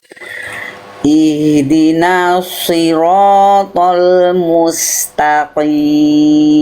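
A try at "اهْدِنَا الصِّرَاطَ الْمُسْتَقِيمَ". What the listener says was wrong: Rohnya masih agak kayak orang bule, kurang bergetar sedikit ya. Sliro.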